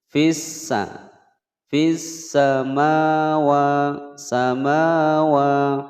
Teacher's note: Lebur tidak terbaca ya, langsung dimasukkan ke huruf sin. · samawa, panjang dua ketukan mulhaq mad tabi'i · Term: al syamsiyah